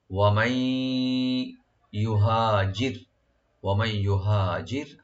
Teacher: আর রা এখানে অবশ্যই আমরা লাইট করে পড়বো, একদম পাতলা করে। ইউহাজির, ফি একালিপ টানবেন, সাবিলিল্লাহি সিনটাকে ওপেন রাখবেন, বি একালিপ টানবেন।